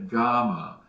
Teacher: we take the top of the back of our tongue and press it up against the roof of the mouth the pallet